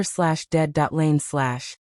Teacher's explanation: with the emphasis on the first syllable. Just make sure you pronounce both parts clearly.